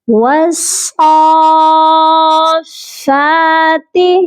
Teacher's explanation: کھڑی زبر کو 1 الف کے برابر لمبا کر کے پڑھتے ہیں